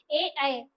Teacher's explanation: कंठ से भी हमारा साउंड आ रहा है तालु से भी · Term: कंठ तालु